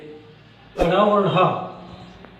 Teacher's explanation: जब इसके उच्चारण होता है तो एक बार ड बोलने में एक बार जीभ सटती है और हट जाती है, ढ बोलने में उसी तरह की स्थिति होती है, लेकिन ड़ और ढ बोलने में जीभ नाचती है मूर्धा में सटकर। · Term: उत्क्षिप्त